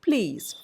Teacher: The l becomes a voiceless sound. L by itself is a voiced sound, but when it is combined with a p sound before it, very often the voiced quality of l changes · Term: progressive